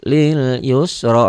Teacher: ronya dibaca tebal karena baris di atas.